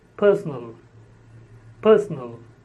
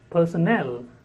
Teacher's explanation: the word personal is stressed on the first syllable and personnel is stressed on the third syllable